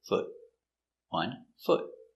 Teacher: it's the short uh foot not the long ooh